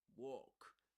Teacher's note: but in American English walk it's shorter